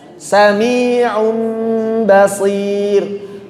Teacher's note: seakan-akan setelah ain ada mim sebelum mengucapkan ba. Sami'un basir.